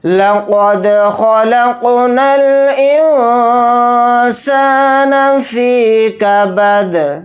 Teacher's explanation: حمزہ کو نون ساکن کے ساتھ ملا کر پڑھیں گے، نون ساکن کے بعد سین آ رہا ہے تو اس میں اخفا کا قاعدہ ہو رہا ہے کیونکہ سین حروف اخفا میں سے ایک حرف ہے، نون کی آواز کو ناک میں چھپا کر اخفا کے ساتھ پڑھیں گے۔ سین کے ساتھ الف مدہ ہے، سین الف زبر سا کو تھوڑا کھینچ کر پڑھیں گے، ایک الف کی مقدار، نون کو جلدی پڑھیں گے۔ · دال کے نیچے دو زیر ہے تو دو زیر نہیں پڑھے جائیں گے حالت وقف میں، حالت وقف میں دال ساکن ہو کر پڑھا جائے گا